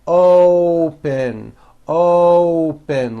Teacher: to say this word you're not saying open with an ah you're using that hidden w you're bringing your lips forward